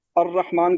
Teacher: الرحمن میں الف لام کا ادغام ہو گیا